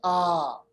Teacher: یہ مد اصلی جو ہے یہ صرف ایک الف کے برابر اس کو لمبا کرنا ہے. جیسے ہم پڑھیں گے آ، یعنی پہلا حمزہ زبر آ، उसके बाद अलिफ लगाइए तो बन जाएगा आ, बस एक अलिफ।